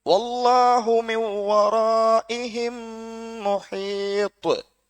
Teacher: முஹீத், இந்த தாவை நாங்க அழுத்தி நிறுத்தணும். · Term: பெரிய கல்கலா